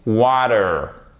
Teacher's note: En American English, donc le T, quand il est entre deux voyelles, en American English, ok, il est prononcé presque comme un D. Water. Et le A, c'est un A long.